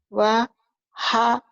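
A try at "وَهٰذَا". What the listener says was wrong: hanya kurang ini. Wa he kayak masuk angin, he. Di dada Kalau kalau H kecil kan ha, rehan, rahmah tuh ada di tenggorokan. Itu H kecil. Kalau H di dada dipegang, dadanya ada getaran. Wa ha zo.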